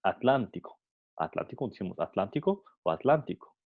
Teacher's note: la explosiva se debilita tanto que en algunos hablantes la articulan como fricativa, D, como la fricativa de la letra del sonido D.